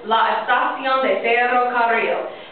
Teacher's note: Trill those R's, trill those R's. So the double R sound, you trill the R's, it's a little longer sound.